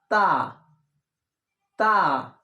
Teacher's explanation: তয়াকার তা। তা উচ্চারণ হবে, দাঁতের মাড়ির ওপর মাড়ির সঙ্গে লাগিয়ে এইভাবে তা।